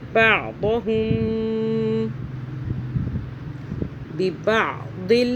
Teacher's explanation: میم ساکن کا قاعدہ کیونکہ آگے با آ رہا ہے اس لیے غنہ کریں گے